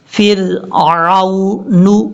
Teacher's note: وجاء فرعون، عین کو واو سے کنیکٹ کرتے ہوئے لمبا نہیں کریں گے. فرعون، نون کے اوپر پیش ہے، نا نہیں پڑھنا، نو